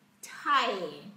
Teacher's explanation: chúng ta phải kéo ra y ở trong âm ai ra tie